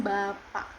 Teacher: a dilafalkan dengan lidah di posisi rendah dan bibir terbuka tidak membulat